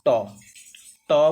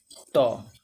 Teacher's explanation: ऊपर जीभ लग रही है, ऊपर तालू में जो कठोर तालू है नाक के नीचे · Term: मूर्धन्य व्यंजन